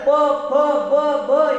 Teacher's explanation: दोन्ही ओठ एकमेकाला चिकटवून नंतर प फ ब ब हे उच्चार करत असताना वरचा आणि खालचा ओठ एकमेकाला चिकटत असतो, म्हणजे ओठाद्वारे त्यांचा उच्चार केला जातो, ते वर्ण ओष्ठ असतात, उष्ठे नव्हे ओष्ठ ओठांच्या मध्ये।